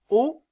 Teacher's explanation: lorsque je prononce la voyelle, ma langue est située plus en arrière. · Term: voyelle postérieure